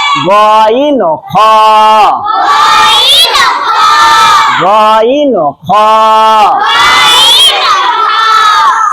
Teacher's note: তিন নাম্বার মাখরাজ হলকের শেষ ভাগ হইতে